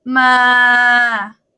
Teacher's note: it this one is try again but you go low so mid-tone is like this flat it's like you're you're projecting your voice like you're you're singing but like like that ma when you